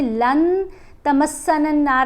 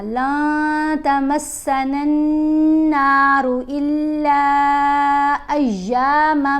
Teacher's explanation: نون کی آواز کو ناک میں چھپا کر پڑھا جائے گا، نون کو بہت واضح کر کے نہیں پڑھیں گے. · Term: اخفا